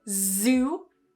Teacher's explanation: So not sue with a s, but try and voice it again.